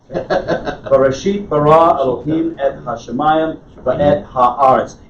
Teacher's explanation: that rhythm is created by putting the stress on the last syllable of the word when possible.